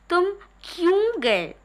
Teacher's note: इसमें से हम क्यू पर विशेष रूप से बल डाल रहे हैं। उस शब्द पर विशेष रूप से बल डाल रहे हैं। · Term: बलाघात